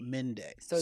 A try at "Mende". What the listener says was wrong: Why you keep putting a Z on it? It's not.